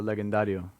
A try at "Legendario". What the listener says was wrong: It's probably legendario, brother. And you seem to be a Latin guy. Why are you pronouncing the G?